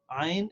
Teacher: when we say Ain, it has a noon sound at the end, so we have to apply ikhfa